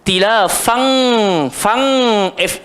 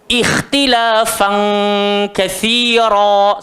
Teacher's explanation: bila nun mati, tanwin bertemu kaf dengan qaf, dia akan jadi NG. Ikhtilafan katsira.